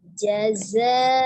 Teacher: Dan zai itu memiliki sifatnya safir, ada desisnya.